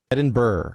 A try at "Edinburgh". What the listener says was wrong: No burg. Edinburgh. Edinburgh.